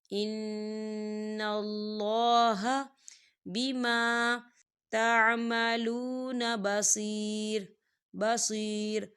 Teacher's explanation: نون مشدد ہے تو یہاں غنہ ہوگا